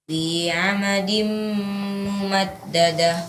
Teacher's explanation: tanwin bertemu mim diunahkan lagi.